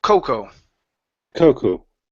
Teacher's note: our stress is at the beginning